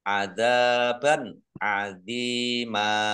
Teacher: fathah tanwin bertemu dengan huruf Ain bacaan izhar dibaca jelas